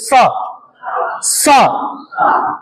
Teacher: त श तीसरा सकार है दंतव्य सकार इसको बोलते हैं स इसको बोलने में दोनों दांतों का स्पर्श होगा हल्की सी जिव्हा भी लगेगी